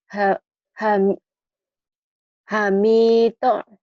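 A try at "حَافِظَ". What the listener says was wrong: Ini ada titiknya jadi zo. Ini bukan mim tapi fa.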